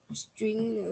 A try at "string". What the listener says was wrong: Không, cái string này nó là một đấy chứ không phải hai, chứ không phải tách nhau đâu nhá.